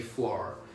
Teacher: I'm not great at American accents, but you would pronounce the R in for. You'd say for.